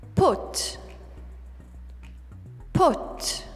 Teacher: it's going to be closer to the schwa sound than the british put